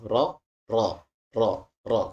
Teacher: kita dapati bahwa nanti ada sedikit udara yang mengalir di atas lidah kita Nah itu di tengah-tengah itu adalah makhrajnya huruf r makhrajnya huruf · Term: huruf ro